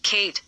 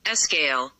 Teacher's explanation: In Kate, the sound is aspirated, but in SKL, it is unaspirated.